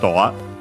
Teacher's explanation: accented like in English on the do